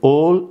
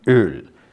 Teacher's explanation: In Hungarian, we have the suffix having two forms, one the fronted form like öl and the other non-fronted form like ol. So there is an alternation between back rounded o and front rounded ö